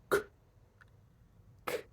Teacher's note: And if I go k, k, k, it doesn't change a huge amount about the K either, because no air or vibration. Air is coming through from that k sound, but there's no phonation, so there's nothing getting warped by the movement of my lips.